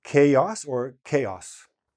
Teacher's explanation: We pronounce the A as a diphthong, is like a two vowel sound. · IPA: kā-äs